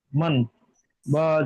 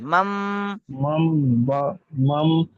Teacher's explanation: যখন আপনি বাকে নিচ্ছেন তখন আর মান পড়বেন না মাম মিম পড়তে হবে